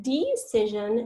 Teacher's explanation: making that e a schwa which we write like an upside down e